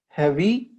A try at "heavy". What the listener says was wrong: Now, I don't want it to sound like a question, like heavy, but let's just pretend it's a statement. Heavy. E is low, but it's gonna slide out there.